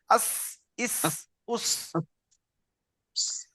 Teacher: জীবের আগাটা সামনের উপরের নিচে দুই দাঁতের আগার সাথে লাগিয়ে যদি চাপ দেওয়া হয় তো একটা সিটি বের হবে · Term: সিনের মাখরাজ